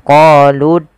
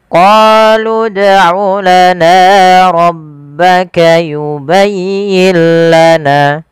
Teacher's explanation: Pada lafal bacaan dal apabila ada huruf dal berharokat sukun, maka kita baca dengan bacaan qalqalah, harus memantul.